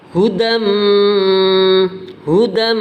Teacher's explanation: Jadi apabila ada tanwin, ya, atau nun sukun, nun mati, bertemu salah satu dari huruf ya, nun, mim, waw, maka dibaca idgham bi gunnah, dimasukkan, kemudian ada dengungnya.